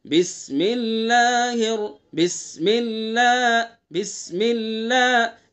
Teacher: بسم اللہ کا جو اللہ کا لام ہے اس کو باریک کریں گے اور اس کے اندر خوش الحانی پیدا کرنے کے لیے اس کے اوپر آواز کو تھوڑا بلند کریں گے۔ بسم اللہ بسم اللہ بسم اللہ، اس طرح آواز کو بلند کریں گے۔